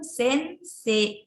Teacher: tidak terlalu jelas kedengaran i-nya karena sedikit disenyapkan